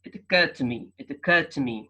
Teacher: so the D is shifted to T